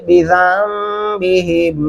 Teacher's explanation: बिज़म्बिहिम ज़ाल को मीम के साथ मिलाते हुए गुन्ना करेंगे,